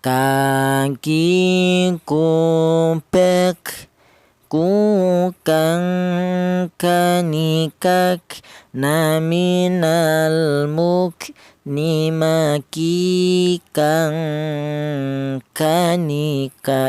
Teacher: Huruf kaf ini keluarnya huruf berasal dari pangkal lidah ya. Pangkal lidah itu lidah bagian belakang, di mana pangkal lidah itu ditempati dua huruf, yaitu huruf kaf dan huruf qaf ya.